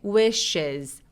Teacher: wishes 할 때 is 소리로 끝나서 저 s가 z 발음이 납니다. 자, wishes 다음에 u라는 소리가 따라왔으니까 저 부분만 발음 한번 해볼게요.